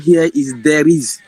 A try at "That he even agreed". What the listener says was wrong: No, it's not there is. It is that. She said it. That. Ta. Even agreed. What is in between? That. Even agreed. Listen again. That he even agreed. This was the sound, the missing sound. He.